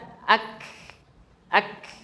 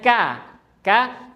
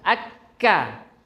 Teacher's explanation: Kalau saya pribadi saya lebih memilih yang sukun untuk mengetahuinya ya. Nah, jadi posisi lidah itu nempel, lidah yang lembek itu nempel ke langit-langit yang keras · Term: huruf kaf